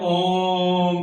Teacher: ऐसे लंबे ध्वनि के अंदर बोलते हैं, उसे हम प्लुत स्वर कहते हैं